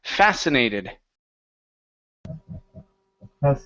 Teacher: Next up is the word fascinated with the stress at the beginning.